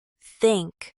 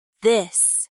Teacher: Place your tongue gently between your teeth and blow air out for think. For this, keep your tongue in the same position but add your voice. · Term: the th sound